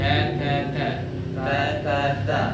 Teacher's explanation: Ada hams atau bahasa sederhananya ada angin. Angin yang tidak terlalu boleh dibuat-buat ya. Ta ta ta tidak boleh.